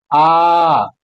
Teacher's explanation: विवृति यानी बड़ा तो बड़ा में आ जाएगा आ पूरा मुह खुलेगा आ ऐसे आवाज आएगी ठीक है उसके बाद से अर्ध विवृति